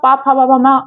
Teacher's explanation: और उसी प्रकार से जब पा फा बा भा, अब आप पा फा बा भा मा में से कुछ बोल कर देखिए, आपको खुद पता चलेगा कि आपके बिना होठों को टच किए आप इन वर्णों का उच्चारण नहीं कर सकते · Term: ओष्ठ